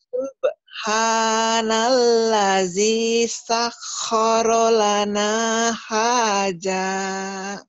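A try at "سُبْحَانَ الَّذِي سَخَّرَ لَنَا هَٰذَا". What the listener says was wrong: Haza. Jangan, tapi jangan haja ya, haza.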